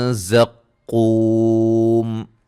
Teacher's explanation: ज़ा को सीटी से अदा करेंगे